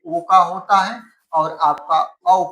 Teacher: कंठोस्ट से किसका उच्चारण स्थान होता है तो याद रखेंगे ओ का होता है और आपका औ का होता है।